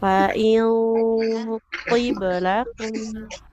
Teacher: Tebalkan ikhfanya. Karena nun sukun dia bertemu dengan huruf to yang tebal. Maka bunyi ikhfanya pun harus tebal.